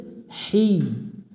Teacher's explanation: হায়াজের হি, এখানে এটাকে লম্বা হা বলে, হলকের মধ্য থেকে একটু শুশু করে পড়ব